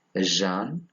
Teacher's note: It is a voiced palato-alveolar fricative.